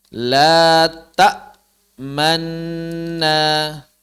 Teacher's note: yang pertama Nun disukunkan masuk ke dalam Nun harakat menjadi Manna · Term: diidghamkan